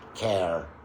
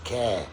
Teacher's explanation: British English is non-rhotic. That means we don't pronounce that R sound.